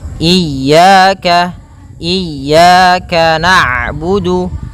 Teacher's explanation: pada lafal ya ada mad tabi'i berupa fathah bertemu alif, maka 2 harokat